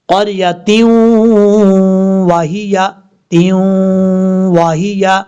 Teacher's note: تا کے بعد واو آ رہا ہے، ادغام یرملون ہونا ہے، ایک الف کی مقدار غنہ کریں گے